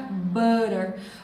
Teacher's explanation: Por que que a gente fala butter com esse R fraco no meio? Porque esse T está entre dois sons de vogais.